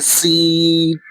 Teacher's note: اور سین جو ہے یہ سیٹی کی آواز نکلنی چاہیے